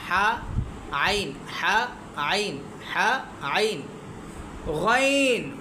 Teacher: গলার মাঝখান থেকে উচ্চারিত আইন এটাও একটু চিপা